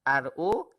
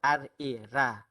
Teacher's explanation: ra yang tebal ialah RO, manakala ra yang nipis ialah RA